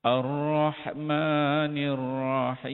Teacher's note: Ar-Rahmanir Rahim kita baca dia dengan wajah 6 harakat. 6 harakat, ambil paling panjang itu idgham kabir.